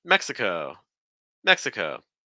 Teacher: so stress that first syllable